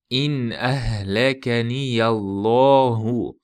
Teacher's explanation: Bu yerda tafhim bo'ladi. Alloh lafzi yo'g'onlashtiriladi.